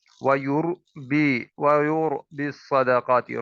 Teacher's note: را ساکن ہے، اسے پر کر کے پڑھیں گے، کیوں؟ کیونکہ اس سے پہلے پیش ہے، یہ را ساکن سے پہلے پیش آ جائے یا زبر آ جائے تو اسے پر کر کے پڑھتے ہیں، موٹا کر کے پڑھتے ہیں۔